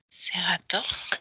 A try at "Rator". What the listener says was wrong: C'est Rator, non Serator, Rator.